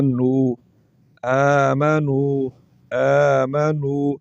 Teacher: نون کے اوپر پیش ہے، آگے واو ساکنہ آ گیا، اس نون کو واو کے ساتھ ملائیں گے اور نون کے اوپر جو پیش ہے اس کو لمبا کریں گے تو واو ساکن کی آواز نکل آئے گی اور یہ بن جائے گا نو، آمنو، آمنو۔